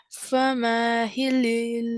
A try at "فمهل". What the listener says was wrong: فمهل. There's a shadda.